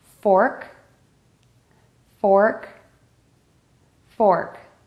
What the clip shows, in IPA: fɔrk